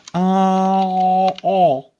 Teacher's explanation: If I go ah, oh, the back of my tongue is low and flat in my mouth, and I'm able to get a point of contact that is lower in my throat.